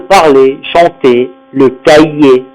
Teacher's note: On doit prononcer le E fermé, on ne prononce pas le R.